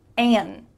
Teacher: We're cutting out that final D. But we can also simply say N.